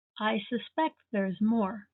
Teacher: to suspect with the stress on the second syllable is the verb